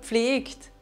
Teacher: ein G und erinnert euch an die Regel von gerade eben kommt ein verschlusslaut nach G dann lassen wir auch hier die Vorsilbe g komplett weg